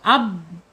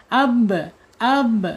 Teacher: Tapi jangan lupa ya syipatnya dia qalqalah harus mantul ya.